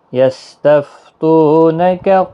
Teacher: یستفتونک، کسی بھی حرکت والے حرف کو کھینچنا نہیں، تو واو مدہ ہے، ایک الف کی مقدار کے برابر کھینچ کر پڑھیں گے۔ یہاں پر وقف بھی آپ کر سکتے ہیں، وقف مطلق بھی ہے۔